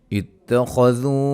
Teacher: خا کو موٹا ادا کریں گے